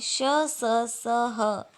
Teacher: श स स महाप्राण अघोष तथा ह महाप्राण सघोष होता है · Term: उष्म संघर्षी व्यंजन